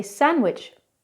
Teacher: We don't really pronounce the D, we say sandwich. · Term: silent D